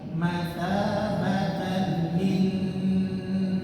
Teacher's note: Nun tasydid ditahan, lama ditahannya.